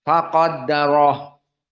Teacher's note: kita membaca ha domir dalam keadaan hams. Faqaddarah, maka haknya dikeluarkan.